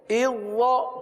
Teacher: ذال کو وا کے ساتھ ملا دیا, ذال ختم ہو گیا ایک طریقے سے, وا باقی رہ گیا